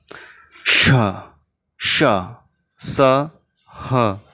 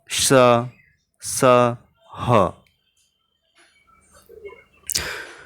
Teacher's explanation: इन व्यंजनों के उच्चारण के समय वायु मुख से रगड़ खाकर ऊष्मा पैदा करती है यानी गर्मी, यानी उच्चारण के समय मुख से गर्म हवा निकलती है, जिसे हम ऊष्म व्यंजन 4 होते हैं।